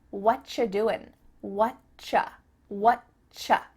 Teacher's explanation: we've cut out completely the word are, and the word you just becomes cha. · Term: CH sound